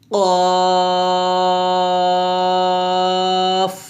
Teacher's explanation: তারপর 4 নং মাখরাজ জিহ্বার গোড়া তার বরাবর উপরের তালুর সঙ্গে লাগিয়ে কফ মোটা করে উচ্চারণ করতে হবে, অর্থাৎ জিহ্বার গোড়াটা তার বরাবর তালুর সঙ্গে লাগাবেন এবং কফ মোটা করে উচ্চারণ করবেন